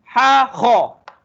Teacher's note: Atas dia berkongsi dua huruf, berkongsi tempat. Ha dan Kha di antara kepala kita ni, sambungan kepada leher kita ni, tekak kita ni, dia penghujung tekak di atas.